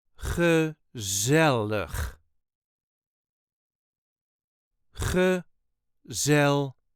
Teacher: The emphasis is on the second syllable.